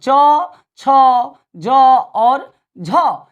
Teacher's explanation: ऐसे वर्ण जिनमें जिह्वा जो है तालु को स्पर्श करते हुए संघर्ष करती है, उष्मा पैदा होती है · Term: स्पर्श संघर्षी